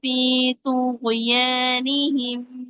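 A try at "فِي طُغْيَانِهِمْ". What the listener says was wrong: تھوڑا سا ٹائم لگائیں گے، تھوڑا سا آواز چلا کے آگے جائیں گے غین کی. ہل گیا. ہل رہا ہے نا، تھوڑا ٹائم تو لگائیے اس پر. غین کو پکڑ کے رکھیں، اس کے پن پوائنٹ پہ لگا کے رکھیں. آپ فوراً چھوڑ دیتی ہیں،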